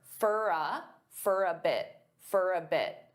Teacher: they'll pronounce for as more of an unstressed for. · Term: unstressed fur